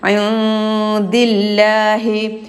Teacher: രണ്ടാമത് സാക്കിനായ നൂന് ശേഷം ദാലാണ്, ഇഖ്ഫ ആണ്, നൂനിനെ മറച്ചു മണിക്കണം